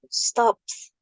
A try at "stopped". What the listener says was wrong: ada D di belakangnya stopped. Stopped. Ada D-nya ya, stopped.